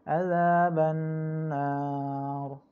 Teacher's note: Nar itu boleh dibaca 2 harokat, boleh juga dibaca sampai 6 harokat ya. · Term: mad arid disukun